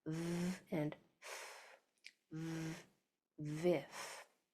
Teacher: Those are both the exact same mouth shape, but one uses your vocal cords. One is vibrating and one is quiet, or voiced and voiceless. So your top teeth are going over your bottom lip in both of those sounds, the V and the F.